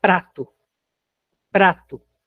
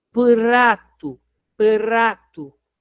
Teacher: Se a gente observar, esse P, ele tem um Ezinho muito rápido. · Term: Shivá